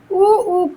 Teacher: उ ऊ का उच्चारण उ ऊ का उच्चारण ओठ से होगा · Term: ओष्ठ